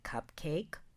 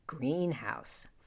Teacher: Spondees have equal stress on both words